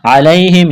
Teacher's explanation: یا ساکن سے پہلے زبر، یا لین ہے، بغیر کھینچ کے پڑھنا ہے